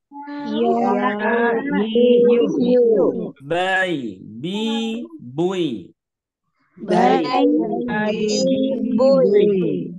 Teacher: Tidak keluar nafas atau yang disebut dengan jahar. Terus dia juga rokhwah.